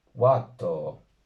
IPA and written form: 'wa.toː (WATŌ)